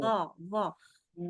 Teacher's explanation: Di sini kan ada makhraj huruf zo nih. Dia kan terasa penuh karena lidahnya semua dinaikin, pangkal belakangnya dinaikkan.